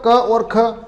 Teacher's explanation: पहला और दूसरे में कंपन नहीं होगा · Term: आगोश व्यंजन